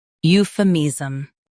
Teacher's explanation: Stress you. Keep femism smooth and quick.